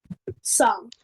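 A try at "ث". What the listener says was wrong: Okay, your tha is very harsh. It is very hard. You have to make it soft.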